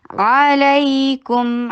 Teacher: आइन को हलक से निकालिए और फतहा के लिए शॉर्ट रखिए